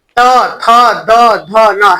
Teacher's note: त देखो दांत में जीभ फेंक रहा है,